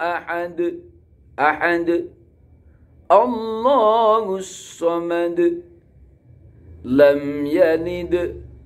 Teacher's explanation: Yang di akhir-akhir kalimat itu dal-dalnya dibaca kolkolah kubro.